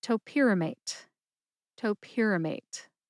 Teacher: Put all 4 syllables together and you get topiramate. Emphasize pier.